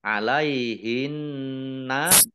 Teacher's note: Alaihinna nun tasdid dibaca gunnah atau mendengung ditahan 2 harokat